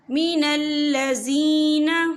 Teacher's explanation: یا ساکن ہے، یا ساکن سے پہلے زیر ہے، تو ہم اسے 2 یا 3 حرکت کے برابر کھینچ کے پڑھیں گے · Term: یا مدہ